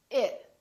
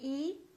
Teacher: so we don't say e we say it very neutral very relaxed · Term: neutral vowels